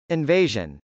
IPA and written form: .ɪnvˈeɪʒən (invasion)